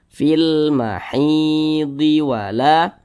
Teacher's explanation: hukumnya adalah alif lam qamariah makanya huruf lamnya terbaca dengan jelas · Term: alif lam qamariyah